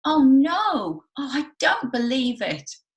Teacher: Notice that it's a little bit higher than the normal talking voice, but it's still not as high as that wee sound that we were creating.